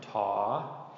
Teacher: Both long rising tones, ta, tan, both the T sounds, typical T sound, okay?